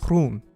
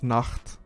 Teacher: words which have this hard fricative G sound, ge, or the ch in Dutch, they often have softer counterparts in English.